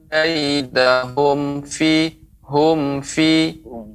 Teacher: Kaidahum ini dibaca jelas, mim mati bertemu dengan fa.